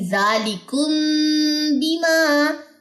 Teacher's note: میم ادا ہوتا ہے ہونٹوں سے، اور با کا جو مخرج ہے وہ بھی ہونٹوں پہ ہی ہے · میم ساکن کے بعد اگر با متحرک آ جائے تو وہاں پہ اخفاء شفوی ہوتا ہے، اور یہاں پہ بھی آپ ساتھ میں مینشن کر لیں کہ یہاں پہ غنہ ہوتا ہے